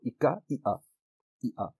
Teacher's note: the K sound, the ka sound, has shifted to a glottal stop